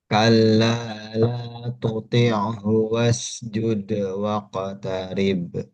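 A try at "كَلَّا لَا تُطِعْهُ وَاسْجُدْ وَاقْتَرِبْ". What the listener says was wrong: Bagus. Lagi, Pak.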